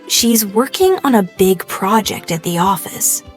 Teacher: Notice the stress on working, big, project, and office. Concentrating on this will help you speak with a natural English cadence instead of sounding too flat or robotic.